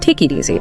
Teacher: that K sound connects right to the I, and it creates this like smooth flow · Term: consonant to vowel liaison